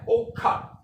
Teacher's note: ਹੁਣ ਔਖਾ ਸ਼ਬਦ ਜਿਹੜਾ ਹੈ ਪੈਣਾ ਤਾਂ ਉਹ ਐੜੇ ਨਾਲ ਹੀ ਹੈ, ਪਰ ਇੱਥੇ ਉਚਾਰਨ ਜਿਹੜਾ ਹੈ ਉਹ ਜਿਹੜੀ ਧੁਨੀ ਹੈ ਉਹਦਾ ਦੋਹਰੀ ਆਵਾਜ਼ ਵਿੱਚ ਹੋ ਰਿਹਾ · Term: ਦੋਹਰੀ ਧੁਨੀ